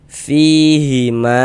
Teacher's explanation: Mad thobi'i panjangnya dua harakat.